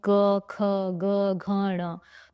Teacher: ऐसा लग रहा है कि कंठ से आवाज आ रही है, मेरे कंठ में जोर पड़ रहा है। इसीलिए इन व्यंजनों को जो है वो कंठव्य व्यंजनों में रखा गया है।